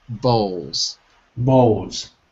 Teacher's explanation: So we don't really say the L at the end of the word. We usually drop it. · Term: No L